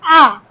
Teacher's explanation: आ विवृत माने आ बोलने पे आपका पूरा मुंह खुला है